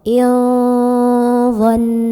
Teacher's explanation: Nah, huruf dha ini secara makhraj tidak terlalu dekat juga tidak terlalu jauh dari nun. Maka cara baca nun sukunnya adalah samar-samar ya. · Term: ikhfa ausat